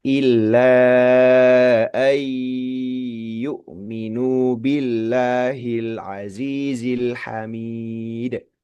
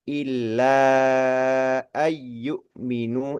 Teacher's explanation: Idgham artinya memasukkan huruf pertama ke huruf kedua. Ketika nun sukun bertemu ya, maka langsung nempel ke huruf ya. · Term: idgham bighunah